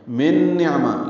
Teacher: من نعمہ یہ نون ساکن کے بعد نون ہے تو ادغام ہوگا، غنہ کریں گے. من آواز ناک کے بانس سے میں لے جا کر دو حرکات تک پھیرائیں گے. نعمہ عین ساکن پہ اظہار ہے.